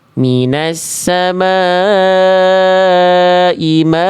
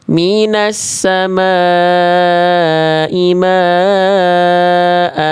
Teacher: berhenti pada huruf berharokat fathatain, dibaca harokat fathahnya dengan kadar 2 harokat. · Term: mad iwad